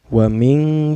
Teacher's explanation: Hukumnya ikhfa karena ada nun sukun bertemu dengan huruf ikhfa yaitu shin ya. Cara bacanya samar sambil berdengung.